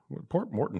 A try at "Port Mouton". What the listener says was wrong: There's no R. It's Mouton.